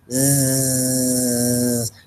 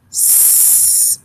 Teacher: Z, z vibrates the vocal folds together. S is unvoiced or voiceless. S and Z are actually what we call cognate pairs.